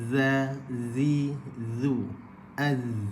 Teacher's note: Huruf zal dalam keadaan hujung lidah dikeluarkan sedikit, ditemukan ke hujung gigi kacip atas